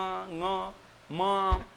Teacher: मुख से तो उच्चारण हो ही रहा है, मुख के साथ में नासिका से भी उच्चारण आ रहा है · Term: अनुनासिक